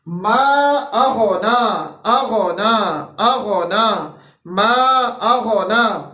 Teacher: حمزہ جو ہے ہمارے پاس اقصا حلق سے اور غین ہمارے پاس ادنا حلق سے